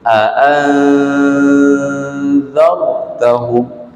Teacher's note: Kita sembunyikan, kita samar-samarkan bunyi nun tu ke dalam huruf ikhfa. Aan za dalam huruf za tu kita sembunyikan nun.